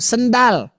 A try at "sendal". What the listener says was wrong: Sendal. Nah, tuh kan Pak, sendal berarti Bapak nggak mantul tuh huruf lamnya. Kenapa dia bisa mantul ketika kita baca alhamdu? Karena tadi Pak, ujung lidah kita dilepaskan, harusnya mah diikat lakban. Ya, kalau masih kurang lakban pakai itu karet. Masih kurang pakai kawat.